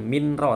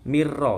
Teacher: nun sukun ketemu ra, bacaan idgham bila gunnah, melebur, bukan minra tapi mirra, nggak boleh dengung ya, cukup satu ketukan.